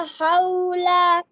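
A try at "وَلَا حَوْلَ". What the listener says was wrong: इसको लंबा नहीं करना, खड़ी जबर नहीं पढ़नी। वला हौला। वला हौला।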